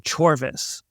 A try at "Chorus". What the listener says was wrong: No, it's Chorus. It's actually Chorus. The V is pronounced like a U. Like in medieval English or something.